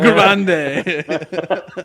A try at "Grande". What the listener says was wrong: You got to roll the R. Grande.